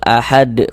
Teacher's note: Nah, jadi dia sukun. Karena dia sukun huruf dal dia mantul.